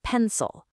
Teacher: The stress is clearly on pen. That means the vowel in the second syllable which is spelled with an I becomes awah.